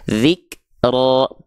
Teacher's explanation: dia nggak dibaca dengan vokal A, tapi dia terdengar condong pada seperti vokal O. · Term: tebal